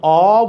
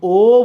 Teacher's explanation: আমি যখন অ বলছি মুখ বড় হয়ে যাচ্ছে, কিন্তু যখন ও বলছি মুখ ছোট হয়ে যাচ্ছে। তাহলে অ হইলে বিবৃত, ও হইলে ছোট, সংবৃত।